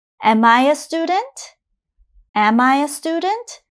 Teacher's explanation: Notice my intonation goes up for the question.